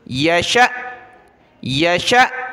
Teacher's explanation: جھٹکا دیں گے حمزہ ساکنہ پر